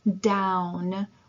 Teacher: we have our diphthongs this a diphthong is when we have a vowel plus a vowel and they make a glided sound a single glided sound